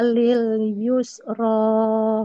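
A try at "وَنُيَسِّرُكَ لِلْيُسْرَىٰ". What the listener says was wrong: Ro-nya hati-hati dikurangi sedikit. Yusra. Masih sedikit lagi, Bu.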